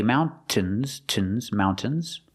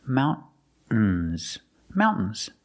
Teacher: Or you can use a stop T and say mountains. Use a stop T, mount, and then you fall to the N.